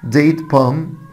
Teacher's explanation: ديت بام خلي بالك ان حرف ال هنا سايلنت